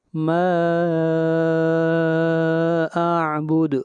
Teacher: عابدون، عابدون، ما اعبد، ما کے اوپر مد منفصل ہے، اس کو 3 الف کے برابر لمبا کریں گے، اور اعبد دال کے اوپر قلقلہ، آواز کو ہلائیں گے